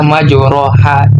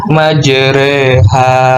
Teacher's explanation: memiringkan bunyi harkat fathah ke arah bunyi harkat kasroh, atau membengkokkan huruf alif ke huruf ya. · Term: imalah